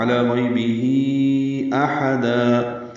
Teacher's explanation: ہی میں مد صلہ کبرا ہے، کھڑی زیر کے بعد حمزہ آنے کی وجہ سے مد منفصل بھی کہتے ہیں اس کو